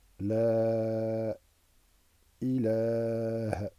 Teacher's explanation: Et ça n'est pas ilah. On met la voyelle sur le ha terminal sans l'allonger. Par contre, on allonge le lam, la voyelle du lam de ilaha.